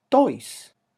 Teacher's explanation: because the speaker is not using the alveolar ridge to pronounce it, and is not using aspiration at the very beginning of the word, then it sounds different.